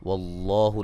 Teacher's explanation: لفظ اللہ کو موٹا ادا کریں گے